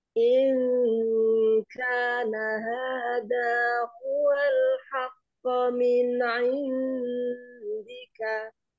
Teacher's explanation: nun sukun ketemu kaf, nun sukun ketemu dal, ini bacaan Ibu Akiki. Jadi didengungkan dulu ya.